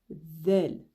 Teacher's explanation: c'est comme si on voulait prononcer le Z sauf que on sort un tout petit peu le bout de la langue